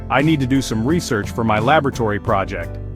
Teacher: Here the stress is on later syllables, research and laboratory.